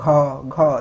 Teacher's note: सो घ वर्ण का उच्चारण स्थान जो होता है वो कंठ होता है। जैसे आप घ का उच्चारण करिए, घ, देखिए कंठ से आ रहा है ना, सो ये कंठ होता है।